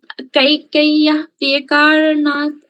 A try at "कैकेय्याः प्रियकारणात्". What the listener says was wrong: So actually in Sanskrita, all of these two are to be pronounced long vowels. These are Kaikeyaha. Priyakaranat. Yaha. Yaha. It's longer.